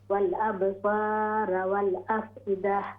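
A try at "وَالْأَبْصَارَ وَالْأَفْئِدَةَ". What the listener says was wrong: را ہیوی ہوگی، والابصار والافئدہ.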